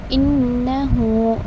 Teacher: نون کے پاس آپ کو اگین تشدید آ رہا ہے، تھوڑا سا آپ اس کو دبا کر پڑھیں گے